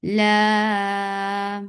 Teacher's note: La mad muttasil wajib, making it 4 counts long without going into your nose.